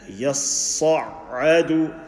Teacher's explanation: Sad full mouth, ya empty mouth. And both shaddas.